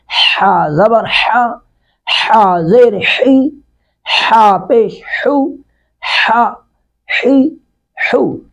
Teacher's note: اب اوپر والا ہاں ہم نے پڑھا تھا ہاں اپنی حالت میں نارمل، لیکن اس کو ذرا تھوڑا سا اہتمام سے پڑھیں گے۔ ہا حلق سے شدت کے ساتھ نکالیں گے